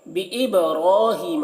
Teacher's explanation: बा हुरूफ़ कलकला में से है और बा में जज़्म है, तो बा में कलकला करेंगे। यानी बा को जब अदा करेंगे तो बा में एक किस्म की जुम्बिश होगी, आवाज़ टकराएगी, डबल निकलेगी। रॉ को पूर पढ़ेंगे, रॉ में खड़ा ज़बर है तो पूर पढ़ेंगे।